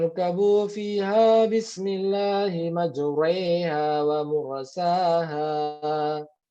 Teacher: Bacanya ingat, yang tadinya fathah dimiringkan ke kasroh. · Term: imalah